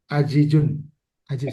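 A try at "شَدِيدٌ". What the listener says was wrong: pakai sya. Mirip kayak jadi tapi ja-nya diganti sya. Ini pakai sya. Syadidun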